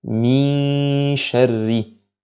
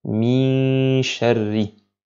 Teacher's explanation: Donc je nasis la lettre qui suit, mais durant la durée du nasillement, je ne prononce pas la lettre shin. Donc min sharri.